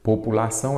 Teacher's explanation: A sílaba forte, no caso, é a última, ela é uma oxítona terminada em ditom.